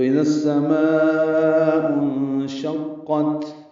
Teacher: شین کو قاف سے ملانا ہے، قاف کو تا سے ملانا ہے، تا ساکن پہ وقفاً ہمس ہوگا · اخفا ہوگا نون ساکن کے بعد شین آنے کی وجہ سے، اس سے پہلے مد متصل ہے، اس کو ہم لمبا کرتے ہیں 4 حرکات سے زیادہ۔